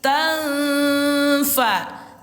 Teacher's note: Baris dua di atas ini disamarkan ke huruf fa lalu disertai dengan dengung dua harakat. Bunyinya tanfa. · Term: ikhfa